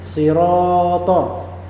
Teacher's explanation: Nah, ketika ada alif yang sebelumnya ada huruf yang fathah, maka dia menjadi mad asli tabi'i, harakatnya 2.